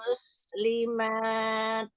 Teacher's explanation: Kemudian di akhir muslimat. Heeh. Alirkan dan percikkan hamsnya